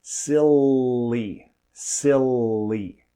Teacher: The blade of the tongue is placed above and behind the front teeth, the alveolar ridge. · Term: dark L